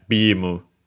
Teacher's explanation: luckily accented on the first syllable, just like that. So yeah, bimu. High, low, low, low.